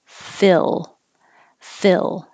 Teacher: your tongue never goes very high. It stays more flat and then up for the L.